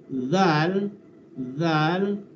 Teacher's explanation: Hujung lidah, ya. Dia keluarkan lidah antara gigi.